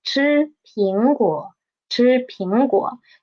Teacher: We will just need to pay attention to the disyllabic word, which is 苹果, and we will read the 果, the third tone, into half the tone